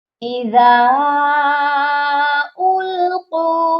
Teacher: ذال کے ساتھ الف ہے اور اس کے اوپر مد بھی ہے، اس کو ہم نے لمبا کر کے پڑھنا ہے۔ القوا، قاف کو ہم نے موٹا کرنا ہے اور اس کے ساتھ بھی واو مدہ ہے، اس کو بھی ہم ایک الف کے برابر لمبا کر کے پڑھیں گے۔